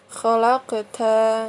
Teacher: Khalaqta. Nah, ini qalqalah sugro ya. Karena qalqalah yang berada di tengah kalimat. Kemudian mantulnya ringan ya